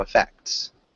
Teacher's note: as you get more comfortable saying it like effects you can add like a faint t sound